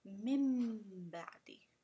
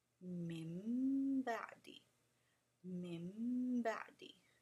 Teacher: You can hear the ghunna sound and you hear a mim in there. This is the meaning of iqlab.